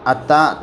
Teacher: تا کے اوپر کھڑا زبر، اسے تھوڑا کھینچ کر پڑھیں گے